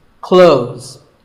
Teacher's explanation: Well, first of all, this word is not cloths. When we say clothes, the TH in the middle can often be silent. Clothes. But it's not wrong if you say these letters with a the sound.